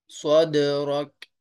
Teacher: دال کو ہلا کر پڑھیں گے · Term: کلکلا